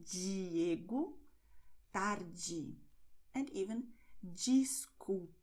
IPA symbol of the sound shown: dʒ